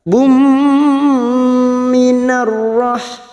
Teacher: nun sukun atau tanwin yang bertemu 4 huruf ini termasuk huruf mim, maka siap masuk dan mendengung, masuk pada huruf mim dan ditahan selama 3 harokat. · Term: idgham bi gunnah